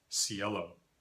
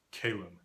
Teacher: The K has lenited to an S.